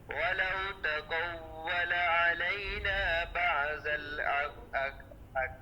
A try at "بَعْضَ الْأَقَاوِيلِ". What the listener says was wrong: بعض الأقاويل ذات کی سیٹی نہ ہے، ذات کے اندر سیٹی نہ آئے.